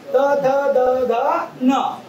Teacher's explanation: आपल्या जिभेचा टोक वरच्या दाताच्या मागील बाजूला जाऊन भेटलेला आहे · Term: दंतवर्ण